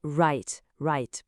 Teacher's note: Le W qui devient complètement silencieux dans write